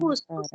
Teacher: یوسف میں ہمیں آواز محسوس ہوئی کہ پست آواز اس میں سانس چل رہا ہے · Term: ہمس